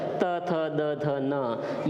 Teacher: इनका जो उच्चारण स्थान है वो दांत है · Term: दंतीय वर्णों